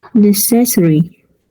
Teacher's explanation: stress is in the first one not the second one huh first syllable necessary not necessary NE go up